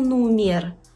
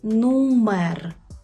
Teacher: У польській мові «е» читається як звичайне «е». Ні в якому разі не «є»